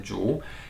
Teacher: the bamboo in Chinese is called Zhu, second tone rising